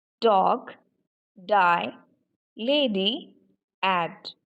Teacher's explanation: Here again you can feel the vibration, and that's why the sound D is voiced